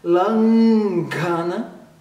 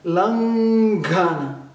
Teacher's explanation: Então a palavra em sânscrito diz é langana, atenção para esse N com pontinho em cima, langana, ok? Joga o N lá na garganta, langana, porque o G é formado na garganta.